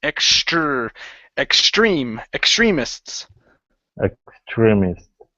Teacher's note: give me a good TR use a CHR combination